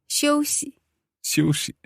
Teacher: okay so that's a neutral tone at the end there